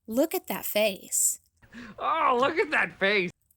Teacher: the second line stresses the word face just as much as look, with the pitch just a tad lower on face. The rhythm sounds like da-da-da-da, da-da-da-da, da-da-da-da.